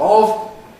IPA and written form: ɒv (of)